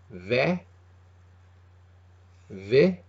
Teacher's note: the Slender BH is a v sound a tight V